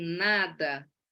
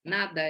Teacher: ela é considerada uma consoante nasal, porque o ar passa pela cavidade nasal, vindo do pulmão, passa aqui abaixa-se o véu palatino, o ar passa pelo nariz , o fechamento da cavidade oral se dá aqui na ponta